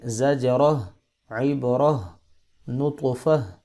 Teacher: آخر میں گولتا آ رہی ہے تو گولتا ساکن ہا میں چینج ہو جائے گی